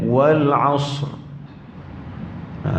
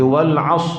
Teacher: Dia ada takrirat. Dia kena ada sifat huruf ra yang ada takrir tu dibunyikan sedikit. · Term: takrir ra